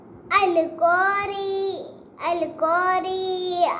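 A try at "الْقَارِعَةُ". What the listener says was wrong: ری کو لمبا نہیں کرنا. اب دیکھو نا کتنا ایزی ہے. میم زبر لام مل.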